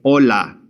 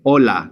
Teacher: the H is silent. It's there in writing, but you will never say an H in Spanish. So for the example, the word we use to say hello to somebody, we would simply say hola.